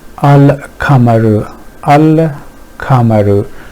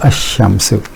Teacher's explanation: The point is that lam is not pronounced, and you go right from hamza to sheen, and the flow is much better.